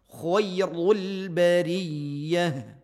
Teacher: menipiskan lam menebalkan ra.